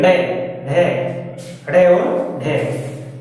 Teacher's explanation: जीभ में जो फड़फड़ाहट होता है ना, इसीलिए इसको उत्क्षिप्त या ताड़नजात बोला जाता है · जब हम इनका उच्चारण करते हैं तो हमारी जीभ तड़ाक से ऊपर नीचे होती है, ऊपर जाके टकराती है, तड़ाका सा होता है, उत्क्षिप्त होती है।